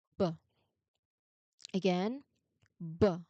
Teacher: There is a vibration, and that means it is a voiced sound.